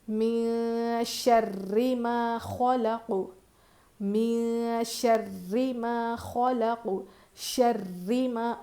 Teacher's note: را پہ سختی کرنا اور را پہ زیر ہے، باریک پڑھیں گے۔ من شر ما، اتنا بھی شر بھی نہیں کریں گے، ہلکا سا۔